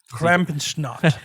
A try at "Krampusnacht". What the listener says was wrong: Did you say Krampus snot? You need to pronounce the T, or it sounds like Krampus snot. Krampusnacht.